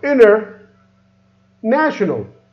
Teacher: again remove the T is become inner national